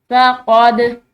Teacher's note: दाल हरूफ क़लक़ला में से है, इसको हिलाते हुए पढ़ेंगे